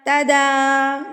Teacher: دال کے اوپر کھڑی زبر، تو اس کو آپ ایک حرکت کے برابر کھینچ کے پڑھیں گے۔